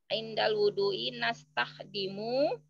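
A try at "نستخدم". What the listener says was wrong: Mu-nya nggak usah panjang-panjang. Nastahdimu.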